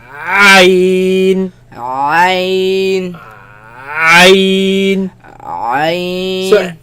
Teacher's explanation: If you remember the ha, remember I said the epiglottis, the flap, moves back towards the back of the throat, right, and creates a very narrow passage through which the air passes. This is the same thing, but this is more tighter than the ha.